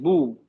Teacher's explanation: बा के बाद होंठों को गोल कर दिया, बू, होंठ गोल हो गए।